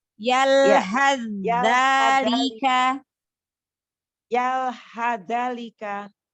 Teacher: Sa-nya jangan dibaca tapi langsung ke zal.